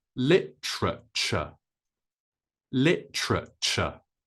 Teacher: the stress is on the first syllable with L and then we say TR and then CH L TR CH